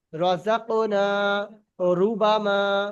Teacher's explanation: র গুলো পুর হবে, অর্থাৎ মুখটাকে গোল করে পড়তে হবে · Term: র পুর